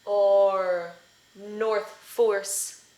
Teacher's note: So this is the sound or, as in north and force, and it looks like this. It's the ah, as in thought, with the schwa plus rhoticity. · historically, these were different sounds. But as time has gone on, they've merged together in almost all dialects.